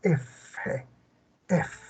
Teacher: un único labio dental donde se une el labio y diente